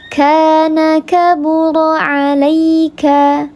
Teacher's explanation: ka alif sebelumnya harakatnya fathah dibaca panjang 2 harakat, namanya mad tabi'i zahir karena nampak alifnya.